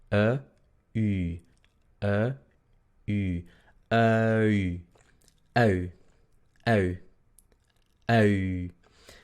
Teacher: Son dos sonidos redondeados en realidad. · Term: UI